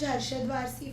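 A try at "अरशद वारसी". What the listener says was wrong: Why do you keep saying Arshad Warsi? Yeah, I think even when you were speaking before, you said Harshad.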